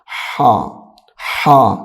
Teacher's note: ہا، اس کو ادا کرتے وقت سانس کی آواز نکلتی ہے